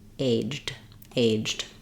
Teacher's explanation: I have a reduced I vowel between my j and my d.